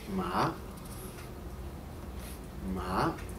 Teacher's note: The second tone is rising. So you start with your pitch slightly lower and raise the pitch of your voice.